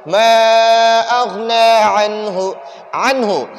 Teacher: نون ساکن کے بعد اگر حروف حلقی میں سے کوئی حرف آ جائے تو نون ساکن میں ہم غنہ نہیں کریں گے، یعنی نون ساکن کو ہم ناک میں نہیں چھپائیں گے، نون ساکن کو ہم ظاہر کریں گے۔